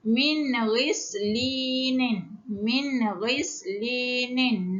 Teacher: Nun sakinah bertemu dengan ghain. Tidak boleh dengung sebab hukum dia izhar halki.